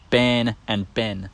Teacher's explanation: some people before the letter N raise the sound a to sound more like e and then also lengthen it